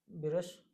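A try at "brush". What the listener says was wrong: इस पे इसको थोड़ा सा ध्यान से बोलिए। इसमें जो बी है ना, उसको जब शुरुआत कर रहे हैं तो बी रश मत करिए। सिर्फ, हाँ, सिर्फ बा से स्टार्ट करके ब्रश।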